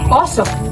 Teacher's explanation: At ang letrang O, mas bilugan ang labi habang binibigkas.